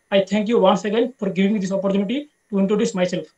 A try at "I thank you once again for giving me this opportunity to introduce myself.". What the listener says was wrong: আচ্ছা, একটু একটু স্পিডটা কমাতে হবে, হ্যাঁ অতিরিক্ত স্পিড হয়ে যাচ্ছে। আর উচ্চারণগুলোর দিকে আরেকটু জোর জোর দিতে হবে আপনাকে, একটু খেয়াল রাখবেন প্রোনাউন্সিয়েশনটা